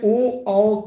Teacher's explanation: ये कंठोष्ठय वर्ण है, मतलब कंठ और ओष्ठ से मिला करके इनका उच्चारण होता है, तो ये कंठोष्ठय हो जाएगा।